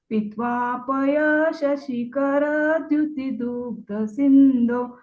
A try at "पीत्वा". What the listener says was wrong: देखिए, पित्वा नहीं, पीत्वा, बड़ी की मात्रा है ना, उसको जल्दी नहीं बोलना। पीत्वा,